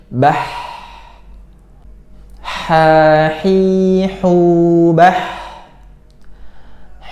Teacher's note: Sedangkan kalau huruf ha ini bah, nah, pita suara itu terbuka lebar sehingga mengeluarkan nafas yang lebih banyak daripada suara